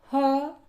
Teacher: ह, इसका उच्चारण स्थान कंठ है। ह को जब हम बोलते हैं तो साउंड हमारे गले से निकलती है।